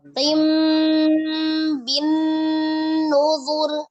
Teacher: Artinya merubah nun sukun menjadi mim sukun disertai dengan gunnah. Iya. Disertai dengan gunnah ya. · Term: Iqlab